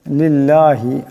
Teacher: আল্লাহর লামের ডানে জের আছে আল্লাহর লামকে পাতলা আওয়াজে পড়তে হবে